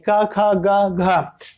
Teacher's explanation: का वर्ग का जो उच्चारण स्थान है वह मित्रों क्या होगा, कंठ होगा